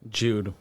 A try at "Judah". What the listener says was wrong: Right, but the E is an A. So if that's an A, how would you pronounce that?